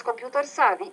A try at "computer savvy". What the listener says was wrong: good vocabulary, computer savvy, nice. Excellent choice of words.